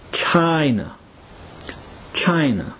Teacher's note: the sound stressed in China is the long I sound